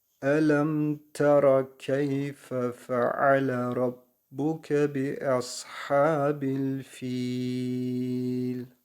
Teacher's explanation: harfinden sonra Cezmi Biz getirdiğimiz için Burası meddi Arız olmuş oluyor 4 saniye fiyi uzatarak lem harfine bağlıyoruz